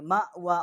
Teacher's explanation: اقصائے حلق جو ہے وہاں سے اس کا مخرج ہے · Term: بڑی ہا